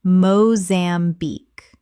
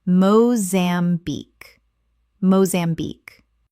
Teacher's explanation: Three syllables with the stress on the final syllable.